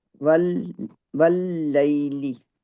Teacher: واو کو لام کے ساتھ ملائیں گے، ہونٹوں کو راؤنڈ کریں گے. یہ شدہ 2 دفعہ پڑھیں گے.